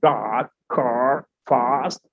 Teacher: the tongue will be a curve and rise toward the soft palate